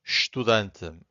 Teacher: this first vowel, it's hard to hear. It's not silent. This E, it's not silent, but it's hard to hear.